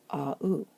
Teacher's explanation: By convention, if you put an accent over the first letter, the message is that we're meant to pronounce those 2 letters as 2 vowels, not as a one-sound diphthong. So this would sound like a-u.